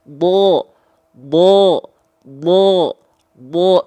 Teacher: huruf Dod itu dia keluar dari tepi lidah tepi lidah itu artinya sisi sisi samping lidah ya samping lidahnya ke mana tempelin Ke gigi Graham atas oke